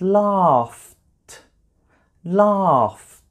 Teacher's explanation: It's a t sound, which is also just air coming out of my mouth.